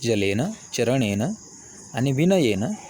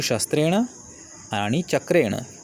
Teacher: तृतीया विभक्तीचा निदर्शक असलेला न हा नळाचा न आहे, म्हणजे दंत्य नकार आहे. परंतु शस्त्रेण आणि चक्रेण या 2 पिवळ्या पार्श्वभूमीवरील शब्दांमध्ये जो न आहे तो मात्र नळाचा न नसून बाणाचा न आहे.